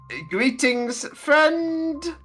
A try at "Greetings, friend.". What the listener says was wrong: Greetings. You're pronouncing the end. You need to stop that.